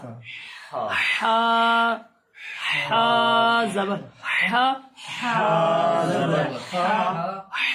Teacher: ہا کا مخرج کیا ہے؟ حلق کا درمیانی حصہ